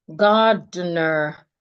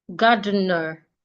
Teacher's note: I'm only stressing the first syllable. The second and the third syllables are not stressed. So because they are not stressed, we call them unstressed syllables.